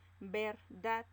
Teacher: la mayor fuerza de voz está en dad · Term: agudas